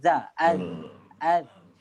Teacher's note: Kalau kita sebut huruf zal, dia lidah kita, hujung lidah dia akan pergi ke bawah Depan gigi kacip atas dan keluarkan sikit. Gigi kacip atas, masing-masing rasalah gigi masing-masing, keluarkan sikit.